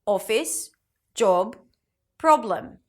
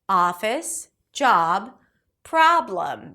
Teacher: Non-native speakers usually associate the vowel letter with a pure vowel sound, therefore pronouncing this O as O, office, job, praab-l'm, whereas it's actually a back open A sound, office, job, praab-l'm.